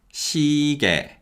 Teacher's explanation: the y glide in the second syllable weakens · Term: weakening of the y-glide vowels